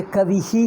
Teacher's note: ಕವಿ ನಂತರ ವಿಸರ್ಗ ಬಂದರೆ ಕವಿಹಿ ಹೇಳ್ತೀವಿ